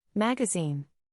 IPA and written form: ˈmæɡ.ə.ziːn (Magazine)